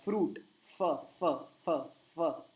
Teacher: second rule लिखिए, अगर विसर्ग के आगे प या फ आता है, प या फ आता है तो क्या होगा, तो उसका हो जाएगा इंग्लिश का फ, जो हम शुरू में कह रहे थे कि आप गलत करते हैं, उच्चारण में वो वापरा जाता है फ, होठ को दांत पे टच करना है